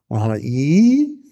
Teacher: die Zunge geht weit hoch nähert sich den harten Gaumen